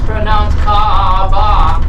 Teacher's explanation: The okina is an upside down apostrophe. So when you get to the okina, you give it a slight pause.